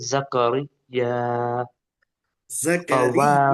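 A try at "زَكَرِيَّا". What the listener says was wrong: زکریا را باریک پڑھیں گے اس کو.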